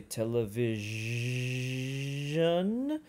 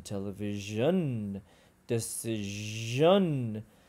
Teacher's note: Again, it's palatal, so we pull our tongue back and up against the top back of the roof of our mouths. We use rounded lips, and we push air out slowly, and it's voiced. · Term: zh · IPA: /Ʒ/